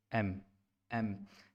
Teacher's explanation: दोनों होंठ मेरे क्लोज़ हो रहे हैं